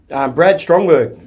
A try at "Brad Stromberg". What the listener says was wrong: Stromberg, not Strong. No T there, mate.